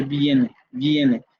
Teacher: esta vocal que usted distingue como I, se realiza como una semiconsonante aproximante palatal sonora, ¿no? Aproximante palatal sonora, como en el caso de viene.